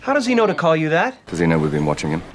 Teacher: the letter H is often silent for the words he, him, his, her, hers, when these pronouns are not the first words of a sentence.